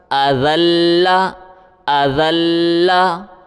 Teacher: حمزہ زبر آ، ذال کے اوپر زبان باہر نکالیں اور لام کے ساتھ ملائیں۔ ذال لام زبر ذل، لام زبر لا، ذال لام زبر ذل، لام زبر لا، اذل، اذل، وقفن، اذل، اذل۔